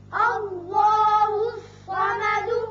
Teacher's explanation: الف پر زبر ہے، لہذا اس میں اللہ کا لام پر کر کے پڑھا جائے گا. اسی طرح صاد حروف مستعلیہ میں سے ہے، یہ پر ہوگا.